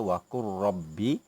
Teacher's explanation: Ya, sama juga macam yang Ustaz terangkan pada minggu lepas, memasukkan huruf pertama yang mati ke dalam huruf kedua yang berbaris. Lam itu mati, masukkan bunyinya ke dalam ra sehingga menjadi satu huruf yang bertasydid. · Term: idgham mutaqaribain